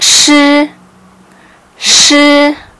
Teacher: ภาษาจีนจะออกเสียงชื้อชื้อเราต้องงอลิ้นเล็กน้อยนะคะ